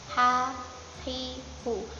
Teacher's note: halus, tidak ada ngorok-ngoroknya